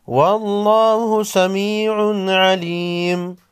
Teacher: لفظ اللہ سے پہلے حرف پر زبر ہے، لفظ اللہ کو لام کو موٹا پڑھیں گے